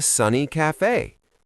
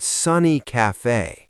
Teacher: I stressed the word sunny.